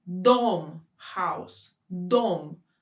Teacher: the tip of the tongue will touch our teeth the back of our teeth